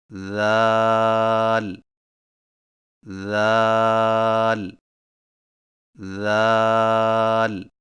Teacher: ذال کی ادائیگی میں زبان کی نوک کو سامنے والے اوپر کے دو دانتوں کے اندرونی کناروں سے نرمی سے لگا کر باریک آواز میں پڑھیں